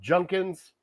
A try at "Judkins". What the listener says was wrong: There's a D in there.